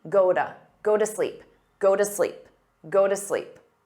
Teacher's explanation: quite clearly but a native speaker might say Goa Goa because that t between two vowels becomes a soft d